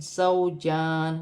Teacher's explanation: جیم پر کھڑی زبر ہے، ایک الف کی مقدار کھینچ کر پڑھا جائے گا. واو کی صورت میں زیر گر جائے گی اور نون ساکن ہو جائے گی.